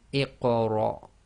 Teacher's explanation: it's short half sound on the ra because the next letter is a hamza with sukoon